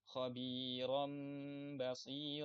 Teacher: nun sukun atau tanwin berubah menjadi mim yang tersembunyi didengungkan dengan tempo dua harakat. Biasanya kalau di mushaf Utsmani atau mushaf Indonesia itu ada tulisan mim kecil di atas nun sukun ketika setelahnya ada ba. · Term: iqlab